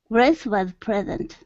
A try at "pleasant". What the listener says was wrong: give me a good pl instead of present